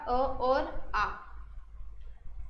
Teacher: स्वर अ और आ कहाँ से बोले जाते हैं? कंठ से बोले जाते हैं। अगर पूछा जाए उनका उच्चारण स्थान क्या है तो कंठ है।